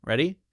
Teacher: really a matter of tongue placement right so it's the tongue the tongue has to be back and up up and back